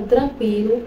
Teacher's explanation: o u é a semivogal pronunciado com menos intensidade E o i é a vogal